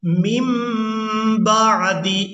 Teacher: نون ساکن کے فوراً بعد با آ جائے تو وہاں نون کو میم کے ساتھ بدل کر ادا کریں گے۔